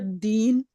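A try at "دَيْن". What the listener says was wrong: दईन, दईन बोलेंगे इसको हम, ठीक है, दीन नहीं बोलेंगे।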